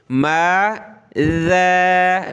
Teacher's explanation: इसकी जगह आपने माज़ा, ज़ा नहीं कहना, क्या करेंगे? ज़बान निकालेंगे, नरम करके ज़ाल को पढ़ेंगे